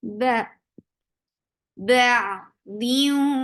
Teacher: Ba for fatha, open your jaws, attach with ain will get sifa of tawassut. Ba diu idgham with gunna. Keeping the sound in your nose for a longer time. Diu for wow, circle your lips.